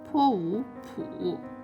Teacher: initial is 坡, its final is 五, and its falling rising tone